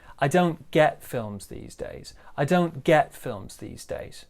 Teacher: we've got kind of a small stress on don't, and then we've got this really big stress on get